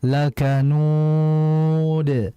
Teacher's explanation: Di situ ada mad arid lis sukun, maka dibaca panjang lakanud.